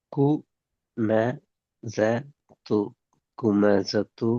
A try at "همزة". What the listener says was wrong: இல்ல சின்ன காஃப் கூண்டா வந்து இது ஸ்டார்டிங் ஆஹா கூ அல்லது ஹூ ஆ ஹூ ஆ